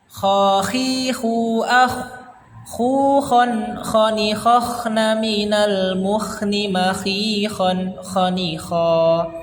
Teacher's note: Ini huruf Kho sama seperti huruf H, dia mengeluarkan nafasnya panjang namun tidak terlalu banyak, mengeluarkan nafasnya banyak namun tidak terlalu banyak dibandingkan huruf H